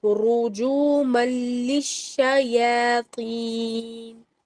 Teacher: را پیش کے ساتھ ہے، یہ موٹا ہے، تو رُجُومًا نہیں بولنا، رجو صرف جیم واو پیش لمبا ہوگا، رجو اور را موٹا ہوگا